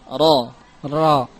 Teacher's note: walaupun dia huruf istifal, namun ketika maftuhah, ketika di fathah, maka bersifat mufakham.